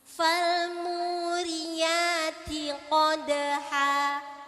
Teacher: Kalau ro itu tafkhim, tebal. Kalau ri jadi tarkik. Namanya ro tarkik. Ro-nya harus tipis.